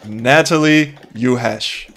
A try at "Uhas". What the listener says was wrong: no, where's the R coming from? You said you harsh.